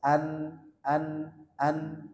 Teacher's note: ujung lidah bertemu dengan gusi atas ini yang gusi dua gigi seri atas